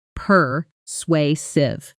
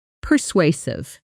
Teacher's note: The stress is on the second syllable, and that middle part sounds like sway,